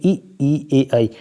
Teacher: जीभ के आगे वाले पार्ट पे अगर आपका जीभ का जोर पड़ रहा तो ये अग्र स्वर कहेंगे